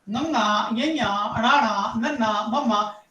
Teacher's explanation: ਉਹ ਨਾਸਕੀ ਪੰਜਾਬੀ ਦੀਆਂ ਧੁਨੀਆਂ ਨੇ, ਕਿਉਂਕਿ ਇਸ ਵਿੱਚ ਨੱਕ ਤੋਂ ਆਵਾਜ਼ ਨਿਕਲ ਕੇ ਔਰ ਸਾਊਂਡ ਪੈਦਾ ਕਰਦੀਆਂ